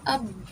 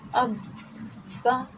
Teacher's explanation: یہ دیکھیں پہلے ہم ایسے رکے، حمزہ با زبر اب. آپ نے دونوں ہونٹوں کو بند کر کے منہ کے اندر گونج پیدا کرنی ہے اور تھوڑا سا رکنا ہے سختی کے ساتھ. حمزہ با زبر اب، با زبر با اب، با.